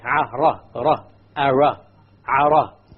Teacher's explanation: when we pronounce the R in Arabic, the ra in Arabic, we do not roll the tongue. We do not repeat the sound of the ra. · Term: Arabic Ra